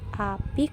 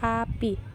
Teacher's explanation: Terdapat 2 alofon, yakni I tinggi atas depan tak bundar dan I tinggi bawah depan tak bundar. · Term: fonem I